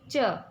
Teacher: तो च वर्ण हम तालु से बोलते हैं